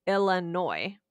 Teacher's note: but we don't pronounce the S. We say Illinois.